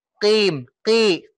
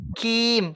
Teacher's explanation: kalau kaf di kasroh itu dia nggak isti'la. Pangkal lidahnya nggak naik, Pak. Ya. Jadi pangkal lidahnya di bawah.